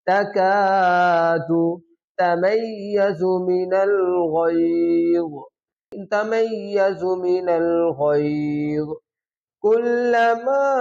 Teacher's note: یہ جو میم کے اوپر یہ جو مد ہے اس کو کہتے ہیں چھوٹی مد، اس کو 3 الف کی مقدار لمبا کیا جاتا ہے۔